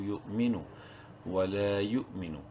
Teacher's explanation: واو زبر وا، لام الف زبر لا، ایک الف برابر لمبا کریں گے لام کو الف مدہ کی وجہ سے. یا حمزہ پیش یو، جھٹکے سے پڑھیں گے یا کو حمزہ سے ملاتے وقت. واو سائلنٹ ہے، میم زیر میں، نون پیش نو، یؤمنو ولا یؤمنو.